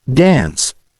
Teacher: in received pronunciation words like dance are pronounced with a long a sound